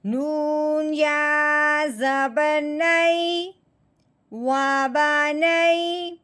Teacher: یا ساکن کو، نون کو یا ساکن کے ساتھ ملاتے ہوئے نرمی کے ساتھ پڑھنا ہے، جھٹکے کے ساتھ نہیں پڑھنا، کیونکہ لین کا مطلب ہے لفظ کو نرمی سے پڑھنا، جھٹکا لگاتے ہوئے یا کھینچتے ہوئے بالکل نہیں پڑھنا۔